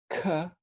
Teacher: plosive then we have ca or c whispered which would be an unvocalized dorso velar plosive